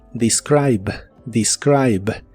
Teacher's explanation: la primera e se pronuncia como i pero la i latina se pronuncia como I